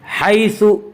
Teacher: رغدن حیث، حیث یالین، یالین وہ یا جو ساکن ہو اور اس سے پہلے زبر ہو، یالین کو نرم آواز کے ساتھ پڑھیں گے